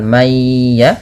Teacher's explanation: ditahan yang kedua Idam bunah pada lafal mayya yang di mana bunyi suara dimasukkan kepada huruf ya dan ditahan